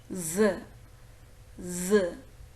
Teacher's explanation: It is a voiced alveolar. We could easily see the vibration in the vocal cord Z, Z. The blade of the tongue just touches the teeth ridge and the air escapes through the sides of the tongue.